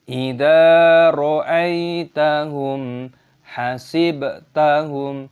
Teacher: Ra'aita, ada ya sukun, dibaca "ra'aitahum". Mim sukun bertemu dengan ha, dibaca sebagai izhar syafawi, jelas, jangan menasalkan